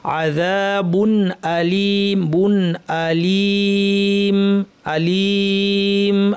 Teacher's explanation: এখানে তানবিনের পরে হামজা আছে, হামজা হালকের হরফ, কণ্ঠনালীর 6টি হরফের একটি, কাজে ইজহার হবে, তানবিনটাকে স্পষ্ট করে পড়তে হবে।